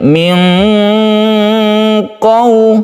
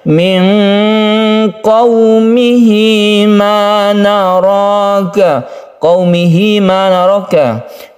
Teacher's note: Ketika kita membaca nun, kita bersiap membaca qaf. Memang untuk huruf qaf dan kaf itu membentuk suara eng ya, karena memang ketika kita menyiapkan huruf qaf memang membentuk suara tersebut. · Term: ikhfa